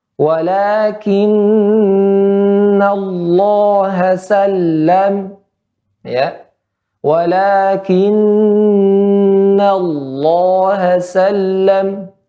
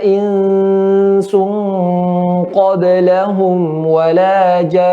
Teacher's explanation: Maka pada nun bertasydid atau mim bertasydid maka tingkatan gunnahnya akmal, sangat sempurna.